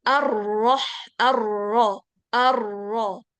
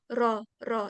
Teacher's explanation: nggak naikkan pangkal lidah. Sehingga suaranya ar-ro, ro, ringan gitu. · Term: tipis